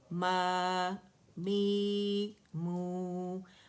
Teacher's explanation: ماں نہیں بولیں گے, ماں نہیں, غنہ نہیں آئے گا اس میں